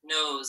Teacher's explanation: we have our e i silent e at the end so between these two vowels we're hearing that z sound